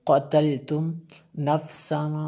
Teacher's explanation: فا حروف اخفا میں سے ہے اس لیے میں نے غنہ کیا